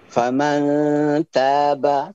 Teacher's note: turun muatan dengungnya saat dibaca ikhfa hakiki.